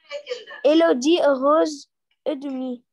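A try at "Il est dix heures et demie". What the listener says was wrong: Ok, mais 10 heures, not heureuse, mais des heures. Elle est 10 heures et demi.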